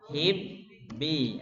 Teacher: Idgham langsung masuk ke ba.